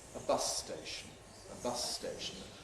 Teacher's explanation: Similarly, with ‘a bus station’ [ə ˈbʌs steɪʃn̩], we have a long [s].